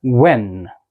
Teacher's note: मैंने अपने लिप्स को रोल किया, ठीक है, उसके बाद एकदम से गश ऑफ एयर फेंका